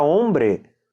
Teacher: vai falar a palavra hombre, o H você não pronuncia, que nem no português homem, mas no português tem muito mais, tá?